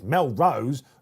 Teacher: put the stress on the second syllable